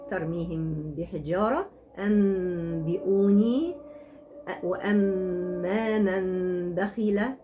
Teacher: القلب هو قلب النون الساكنة إلى ميم ساكنة عند ملاقاتها للباء مع إخفاء صوت الميم مع وجود غنة